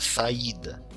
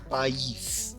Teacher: são de fato duas vogais As duas são fortes então cada uma tem a sua sílaba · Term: hiato